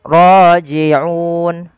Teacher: maka dia berubah menjadi Mad Arid l sukun panjangnya berapa harakat Mad Arid l sukun kita boleh baca dua empat ataupun enam harakat · Mat arid disukun kita boleh baca 2, 4 ataupun 6 harokat. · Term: mad arid lis sukun